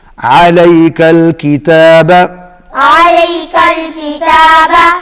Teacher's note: عین حلق میں سے نکالیں گے